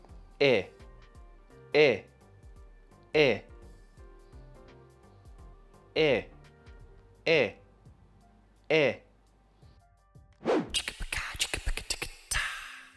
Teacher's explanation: our mouths are a little more open, and our tongues and lips are relaxed. This is a short sound. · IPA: /ɪ/